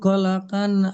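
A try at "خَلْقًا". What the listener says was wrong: খলা নয়, খল। খলাম যাবার খল। খলা হয়ে যাচ্ছে, লামের উপরে জাবার এসে যাচ্ছে। লামের উপরে সাকিন আছে, খল। খল কান নয়, কন, মুখ গোল হবে। খল কন।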